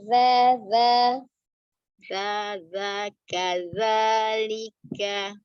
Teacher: Ya, huruf zalnya tidak terbaca kaza ya. Kaza ujung lidahnya ada di ujung gigi seri bagian atas